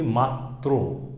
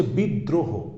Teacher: র ফলাটা দ্বিত সহ উচ্চারিত হচ্ছে।